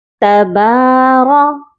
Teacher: با کو ہم نے ایک الف کی مقدار لمبا کرنا ہے کیونکہ با کے اوپر کھڑی زبر ہے، اور را کو موٹا کر کے پڑھا جائے گا۔